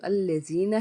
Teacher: یا ساکن سے پیچھے زیر ہونے کی وجہ سے ہم نے اس کو ایک الف کے برابر کھینچا